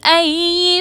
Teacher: یا مشدد کو مضبوطی اور دباؤ کے ساتھ ادا کریں گے